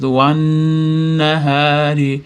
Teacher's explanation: tashdidli nun g'unna bo'lganligi uchun ushlab turamiz. Wan nahari hadan keyin alif mat bor cho'zamiz. · Vannahari degan mana nun ham shamsiya harf bo'lganligi uchun o'rtadagi alif bilan lam o'qilmay qolyapti. Nunni ham tashtidli nun g'unna bo'lganligi uchun ushlab turamizda.